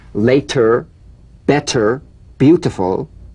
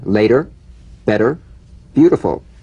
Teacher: T becomes a soft D all right it's not a complete D but it goes toward a d